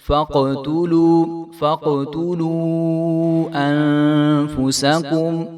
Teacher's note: قاف ساکن ہے تو قاف بھی حروف قلقلہ میں سے ہے، تو اس کو بھی ہم ہلا کر پڑھیں گے